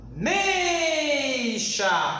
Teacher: o A, o E eu pronunciei com maior intensidade, eu chamo de vogal. O I eu pronunciei com menos intensidade, sinal de menos, eu chamo de semivogal.